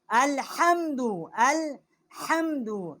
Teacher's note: یہ ہا حلوے والی ہے، وسط حلق سے اس کا مخرج ہے